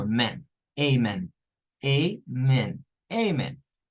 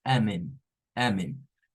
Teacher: No es una A, sino que es un L, es la A mezclada con la O